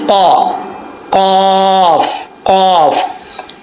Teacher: का जुबान की जड़ ऊपर वाले तालू से लगे, यानी जो गोश्त का लोथड़ा लटका होता है उसके साथ नरम जो तालू है उसके साथ ये जुबान की जड़ लगेगी तो ये काफ पढ़ा जाएगा फुल माउथ